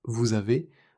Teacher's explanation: le S de vous revient parce que avez commence par une voyelle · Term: la liaison